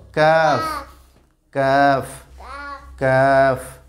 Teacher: আর কাফ হরফটি আদায় করতে হবে জিহ্বার গোড়া হইতে একটু আগে বাড়িয়ে, কিভাবে শক্ত করে আদায় করতে হবে।